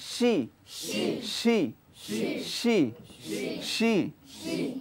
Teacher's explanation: শি এটি ভুল মোটা হবে না শি হবে না শি শি বাতাস বের হবে কিন্তু মোটা হবে না শি শি শি শি শি শি শি শি হ্যাঁ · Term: পাতলা হরফ